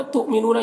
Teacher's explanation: یہاں پر حمزہ ساکنہ ہے، جھٹکا لگے گا، نون میں واو مدہ ہے، 1 الف کے برابر کھینچیں گے۔